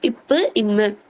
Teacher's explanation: அப்ப 2 உதடு, லிப்ஸ் ரெண்டுமே ஒட்டும்.